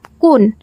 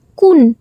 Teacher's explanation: ও এর উচ্চারণ কখনো কখনো উ এর মত করে উচ্চারিত হয় যেমন কি কোন এই শব্দটা কুন এইভাবে উচ্চারিত হয় সঘস মহাপ্রাণ